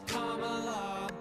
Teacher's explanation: Emphasize the first syllable, it's Kamala.